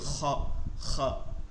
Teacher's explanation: খ এবং গয়ের ক্ষেত্রে উচ্চারণটা হবে হচ্ছে গলার শেষ ভাগ, মুখের সাথে যে গলাটা, এটা শেষ ভাগ বলে। এই কণ্ঠনালীর শেষ এবং তালুতে একটু ঘষা খাবে